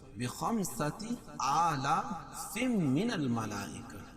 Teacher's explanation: تنوین کے بعد ادغام مع غنہ کے 4 حرفوں میں سے میم ہے تو یہاں غنہ کر کے پڑھیں گے